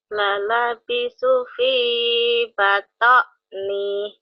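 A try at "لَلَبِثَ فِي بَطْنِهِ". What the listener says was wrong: Mana lalabisu? Lalabisa tahu. Lalabisa, lalabisu. Siapa yang bisa? Lalabisa fi batni. Lalabisa fi batni. Lalabisa fi batni gitu.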